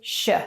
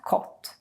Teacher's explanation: when you see a Swedish K followed by an Ö, then you should normally think that it becomes a sh sound instead. That's why we say kött and not kott.